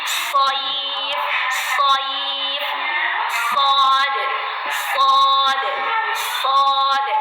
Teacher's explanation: Huruf sad berarti huruf shad ini di ujung lidah antara gigi atas dan bawah